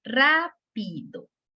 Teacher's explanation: La sílaba ra se escucha, pues, lo estamos escuchando más fuerte que pi y que do. Entonces, pi y do son unas sílabas átonas. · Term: sílaba tónica